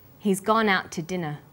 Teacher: We stress he's, gone, out, and dinner. The two is unstressed. When we link out, which is stressed, and to, which is unstressed, the final t sound in out is held slightly longer.